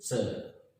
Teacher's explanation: ऐसे बोलेंगे, देखो च, तो आपकी जीभ कहाँ टकरा रही है? ऊपर तालु।